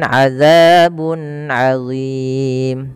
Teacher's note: tanwin bertemu ain, maka dinamakan dengan izhar halqi, maka suaranya tidak boleh ditahan-tahan, harus diperjelas